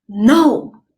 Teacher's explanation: it's a fourth tone in Chinese it's going down